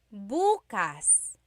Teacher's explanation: If you say buas emphasis is on the first syllable that means tomorrow.